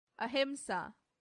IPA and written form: ɑːˈhɪmsɑː (ahimsa)